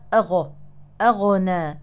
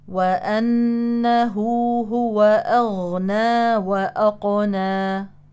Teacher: الغين مجهور نعم ينحبس معها النفس ولكنها رخوه يجري معها الصوت جريانا تاما في مخرج الحرف